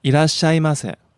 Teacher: You could hear him peak at the ma and then come back down, tail off at the end.